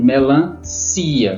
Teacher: somente o si é a sílaba tônica